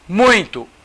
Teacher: O U aparece mais que o I. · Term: ditongo decrescente